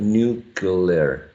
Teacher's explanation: He inserts a schwa right there in between the C and the L. So instead of saying nuclear, he says something like nuclear. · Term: parenthesis